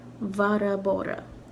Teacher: Also notice I'm adding like an extra syllable that isn't really there in Varabora. Sort of like a phantom syllable or something. And I'm not sure if everyone in Ireland does that, but I know at least some people in this word say Varabora.